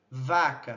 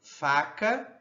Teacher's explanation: Percebam que o V há essa essa vibração das cordas vocais. Então é vozeado e o F não vozeado.